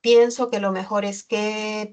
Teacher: la entonación está horizontal porque se ha suspendido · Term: entonación suspendida horizontal